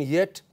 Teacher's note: Palatal, you could also say voiced front semi-vowel. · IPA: /j/